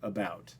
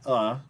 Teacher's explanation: that uh in about is unstressed it's a schwa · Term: unstressed schwa sound